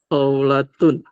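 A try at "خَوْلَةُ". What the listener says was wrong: Naam, khawlatun, mumtaz.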